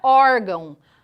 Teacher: a sílaba mais forte da palavra órgão é o or é a penúltima sílaba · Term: paroxítonas